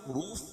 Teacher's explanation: لم معروف، روف واو مدہ، واو ساکن سے پہلے پیش ہو تو واو مدہ ہوتا ہے، اس کو ایک الف کے برابر کھینچ کے پڑھیں گے، اور را کے اوپر پیش ہے تو را کو پر پڑھیں گے۔